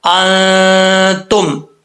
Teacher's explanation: نون ساکن کے بعد حروف اخفا میں سے تا آ رہا ہے تو یہاں پہ ایک الف کی مقدار غنہ ہوگا